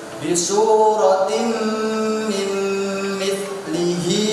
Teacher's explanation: ada tanwin bertemu dengan mim, maka bacanya harus masuk dan mendengung. Itu namanya idgham bi gunnah.